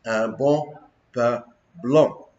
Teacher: a peculiar set of vowels, which are the nasal vowels of French